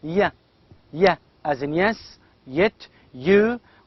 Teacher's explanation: And finally here we have one sound, glide sound, that is ya, ya, as in yes, yet, you. We have only one sound, that is palatal, glide, of course, voiced sound.